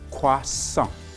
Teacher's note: the main vowel sound you hear is wa and on